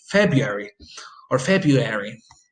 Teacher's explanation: you end up with the pronunciation of February without the R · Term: omission